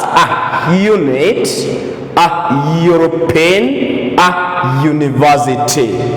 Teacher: these vowel sounds are pronounced as the consonant Y